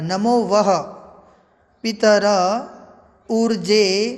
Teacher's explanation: देखिए वह में विसर्ग भी बोलना है,